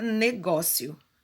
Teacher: E paroxítona, a palavra negócio, né? Que é a sílaba tônica, é a sílaba penúltima da palavra